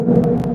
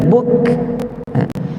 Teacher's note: Dia adalah huruf yang kita panggil syiddah. Kaf ni syiddah, yakni suara kita tertahan bila kita sebut dia, tetapi dia syiddah yang hamas. Yakni bila kita sebut buk, mula-mula kita makhraj tutup rapat, buk, kemudian lepaskan angin, buk.